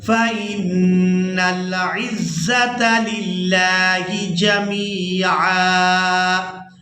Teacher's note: یہاں پر ہم نے کرنا ہے وقف، تو وقف کی صورت میں عین پر ایک زبر ادا کریں گے اور اس کو ایک الف مقدار کھینچ کر ادا کریں گے